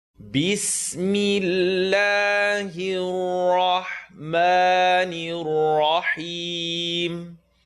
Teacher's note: the lam in Allah is going to be light, and the ra is heavy, ha is light, mim we stretch for two.